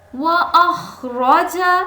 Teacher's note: خا اوپر والے حلق سے